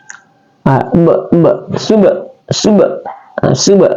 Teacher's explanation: karena ada huruf ba yang sukun nah dia dipantulkan atau dibunyikan ya